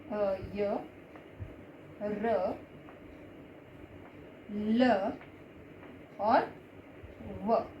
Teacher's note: जिन व्यंजनों का उच्चारण स्वरों और व्यंजनों के बीच का होता है उन्हें अंतस्थ कहते हैं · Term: अंतस्थ व्यंजन